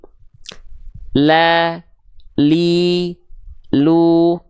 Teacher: yang nempel mana si samping lidah sebelah kanan depan samping lidah samping lidah depan kanan keduanya menyusur sampai ke ujung lidah disentuhkan ke langit-langit bagian depan kita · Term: huruf lam